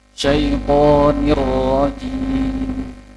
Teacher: roknya itu sedikit saja getarannya.